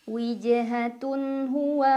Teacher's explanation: tanwin dhammah dibaca jelas, bunyinya masih bunyi an dan tidak perlu ditahan. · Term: idhar halqi